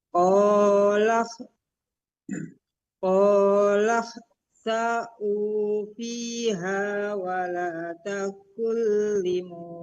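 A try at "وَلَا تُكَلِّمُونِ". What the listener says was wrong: Kebalik. Domah dulu. Wala tukallimun.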